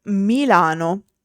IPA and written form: miˈlano (Milano)